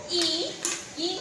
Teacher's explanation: जब ई बोलोगे तो जो हमारी जीभ है वो तालु को स्पर्श करेगी। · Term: तालव्य